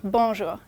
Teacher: and if you want to pronounce it properly don't say bour don't pronounce the N just say bonjour it's very nasal